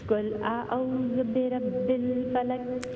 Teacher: रा जो है रा फुल माउथ है